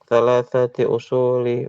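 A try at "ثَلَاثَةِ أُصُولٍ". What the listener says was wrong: Usul. Ya, karena dia ya hukum asalnya kalau isim nggak ada alifnya maka ditanwin. Ya, ditanwin jangan digantung.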